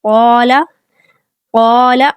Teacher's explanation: قاف کو پر اور موٹا پڑھا جائے گا، حروف مستعلیہ میں سے ہے تو ساتھ الف کو بھی پر کر کے پڑھیں گے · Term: موٹے الف